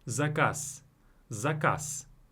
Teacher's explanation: Do you hear me saying S at the end?